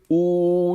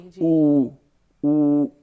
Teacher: ਊ ਜੇ ਆਖਾਂ ਤੇ ਸਭ ਤੋਂ ਦੂਰ ਮੇਰੇ ਲਿਪਸ ਜਾ ਰਹੇ ਨੇ, ਓਸ਼ਟੀ ਜਾ ਰਹੀ ਹੈ।